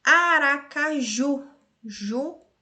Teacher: a última sílaba é a mais forte, oxítona